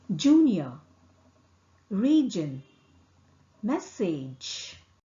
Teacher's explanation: J is articulated with the tongue tip touching the back of the teeth ridge. Here the vocal cord vibrates.